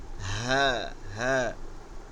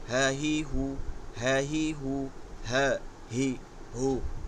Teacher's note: গোল হা, গম্ভীর আওয়াজে কোনো বাতাস বসবে না, হলকে শুরু হইতে হ্যাঁ হ্যাঁ, হা জবর হা, হা জের হি, হা পেশ হু, হ্যাঁ হি হু, হ্যাঁ হি হু, হ্যাঁ হি হু, গম্ভীর আওয়াজে, গম্ভীর আওয়াজ, হ্যাঁ হি হু, হ্যাঁ হি।